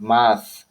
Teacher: contact between the tip tongue and the upper teeth to form a constriction or a restriction or an obstruction of airflow. That's why it is pronounced like you see, air flows, but the tip of the tongue it's just it is in contact with the upper teeth, like math. · That is the reason why it is dental. Now it's fricative because there is a friction of breath in a narrow opening, producing a turbulent airflow.